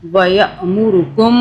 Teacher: میم پہ غنہ کریں گے 2 سیکنڈ کا